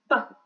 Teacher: when I join my lips, the air is closed behind the articulator, behind my lips, and then with the burst, the sound is released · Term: plosive